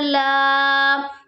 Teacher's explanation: ہے یہاں پر الف مدہ ہو رہا ہے کھڑی زبر ہے کھڑی زبر کو ہم نے حروف مد کی طرح ہی کھینچ کے پڑھنا ہے ایک الف کی مقدار کے برابر